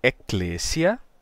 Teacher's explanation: a gente vai perder a vogal longa o e longo se torna um simples e nesse caso a gente também perde o o c duplicado né